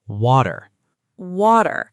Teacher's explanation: In American English, the T sounds like a quick D. It's a flap T.